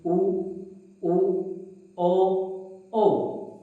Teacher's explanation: उच्चारण करते समय हमारे जो होठ है इनका आकार वृत के समान गोल होता है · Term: वृताकार स्वर